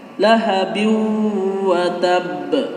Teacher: Itu hukumnya la idgham bi gunnah, memasukkan dengan dengung. Tapi dengungnya di sini tidak terlalu panjang seperti gunnah asli.